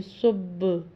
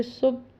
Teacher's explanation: با چونکہ ہونٹوں سے ادا ہوتا ہے تو یہ آپ کے ہونٹ دو بار ٹکرائیں گے تو یہ آواز دو بار آئے گی، یعنی صب۔ ایک دفعہ پڑھیں گے صب تو یہ قلقلہ نہیں ہوگا۔